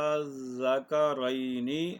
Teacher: یہ تو ساری مثالیں جو تھیں یہ تھیں شد والی، اور اب جزم کی مثالیں، آنا، اور یہ مد اصلی ہے، آ اور آگے لام ہے ساکن جزم والا تو یہ بن گئی مد لازم۔ اور مد لازم کی مقدار 3 الف ہے، یعنی 6 حرکات کے برابر ان کو کھینچ کر پڑھا جاتا ہے